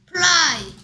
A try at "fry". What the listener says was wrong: Fry. 을 소리가 아니고 얼 소리가 나죠. 입술이 붙였다 떨어내는 게 아니고 윗니가 아닌 입술을 스치면서 푸 소리 나죠.